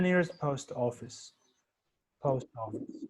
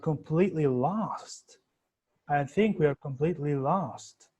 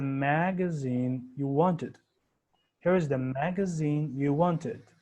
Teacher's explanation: post, finish, lost, magazine are falling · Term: falling intonation